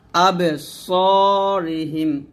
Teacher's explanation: সদ মোটা হবে, বাতাস বের হবে